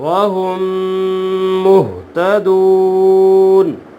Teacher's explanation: واو مدہ ہے، وقف کرنے میں 2 سے 3 الف کے برابر کھینچ کر پڑھیں گے